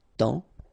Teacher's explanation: it's only the nasal here that you will hear, temps, okay, because the P is not pronounced and the S is not pronounced